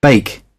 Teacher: they're saying eh followed by I